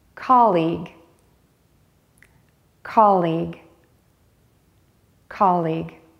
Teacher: end the word with an L made behind your top front teeth